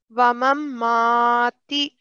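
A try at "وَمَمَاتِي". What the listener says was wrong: Okay, so we don't have a shadda on here. You don't combine the memes. It's wa mamati. The first one is for 1 second, and the second ma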